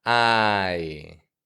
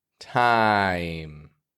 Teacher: Just open your jaw wider, raise your tongue higher in the back, ah, and then finish it off with a yi, I. The ah part of the word is clear and strong. The yi is quick and quiet, fading